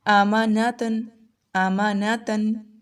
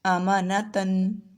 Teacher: تنوین کی ساؤنڈ کیسے آ رہی ہے؟ اینڈ پر نون کی طرح آواز آ رہی ہے، آماناتن، ٹھیک ہے۔